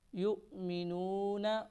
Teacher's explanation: نرمی کے ساتھ پڑھیں گے، یؤمنون واو کو نہیں پڑھیں گے، حمزہ کو پڑھیں گے اور تھوڑا جھٹکا دے کر پڑھیں گے